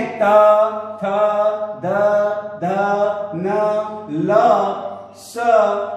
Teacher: जिह्वा दांतों में स्पर्श करती है उच्चारण करते वक्त, उन्हें दंत्य कहते हैं।